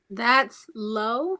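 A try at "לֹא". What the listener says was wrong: No, yes, very good.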